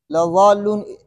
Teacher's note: اور لضالون میں بھی لام کو موٹا نہیں کرنا ہے